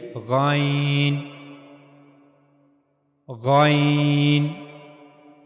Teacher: اور غین کی ادائیگی کے لیے گلے کا اوپر والا حصہ استعمال ہوگا۔ جیسے ہم خا کو پڑھنے کے لیے گلے کا اوپر والا حصہ استعمال کر رہے تھے، ایسے ہی غین کو پڑھنے کے لیے بھی گلے کا اوپر والا حصہ استعمال میں آئے گا۔